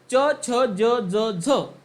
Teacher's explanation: तालव्य म्हणजे काय तर ज्या वर्णाचा उच्चार करत असताना आपली जीभ आपल्या कठोर तालूला स्पर्श करते त्याला आपण तालव्य वर्ण म्हणतो